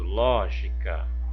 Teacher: em lógica, eu tenho o ló, que é a sílaba tônica